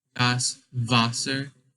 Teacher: for Wasser, you say it with sort of with a V in the beginning instead of a W